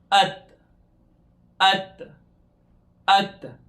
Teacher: ہماری زبان کی نوک سامنے والے اوپر کے دانتوں کی بیک سائڈ پہ لگ رہی ہے۔